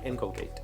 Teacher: the emphasis according to the pronunciation key is on the in